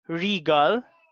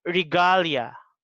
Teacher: regal, stress is in the first syllable, but for this word regalia, the stress is in the second syllable.